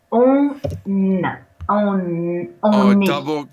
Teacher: because you have this N and then a vowel, you can make, you have to make the liaison